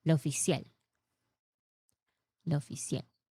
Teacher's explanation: it is pronounced like in Spanish, lo oficial. Emphasis on last syllable.